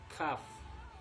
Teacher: dari pangkal lidah dengan langit-langit atas yang keras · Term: huruf kaf